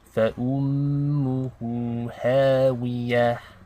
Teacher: meme with a shadda. We want to do ghunna for 2 counts.